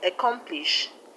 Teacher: And the word accomplish, the stress is on COM